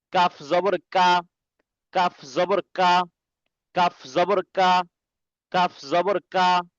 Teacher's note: এই কাফটা জিহ্বার গোড়া থেকে একটু আগে সামনে আসতে হবে, একটু একটু আগে বাড়িয়া তার বরাবর উপরে তালুর সঙ্গে আবার লাগবে, ঠিক আছে?